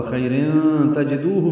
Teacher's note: ہا اقصی حلق سے جلدی ادا کریں گے